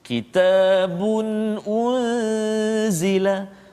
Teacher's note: tanwin bagi depan 2 bertemu dengan hamzah. Kitabun unzila. Jadi tak boleh dengung kat situ. Jangan kitabun, tak boleh. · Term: izhar halqi